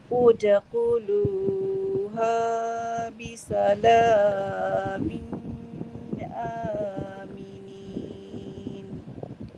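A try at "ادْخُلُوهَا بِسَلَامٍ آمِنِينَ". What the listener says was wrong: Sekali lagi Kak, min tu jangan tunggu, cepat. Min aminin.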